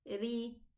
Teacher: But if it has a kasra, we lower the pronunciation and say ri.